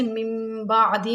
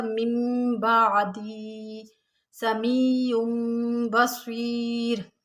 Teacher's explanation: जैसे मिम बादी में नून साकिन है और उसके बाद बा रहा है तो नून साकिन और तनवीन को फिर मीम से बदल लेते हैं, यानी इनके ऊपर छोटी सी मीम लिखी हुई भी होती है, तो यहाँ पर नून साकिन और तनवीन को फिर हम मीम से बदल कर मिम बादी समीउम बसीर, फिर यहाँ पर इकलाब होता है।